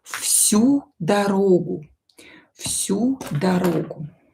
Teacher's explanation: So our voiced consonant near unvoiced will become unvoiced to. V will be pronounced as F.